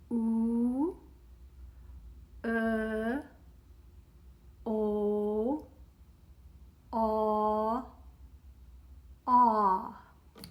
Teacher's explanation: Let's go through the other side of that quadrilateral, where we have from an oo, unrounding the lips, and the tongue is also moving in the back, becoming less occluded inside the mouth as we go oo, o, aw, ah.